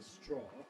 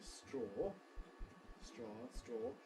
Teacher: phonetically the American vowel is somewhat opener